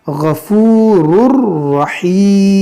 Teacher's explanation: یہاں تنوین کے بعد را ہے تو یہاں پر بھی ادغام کریں گے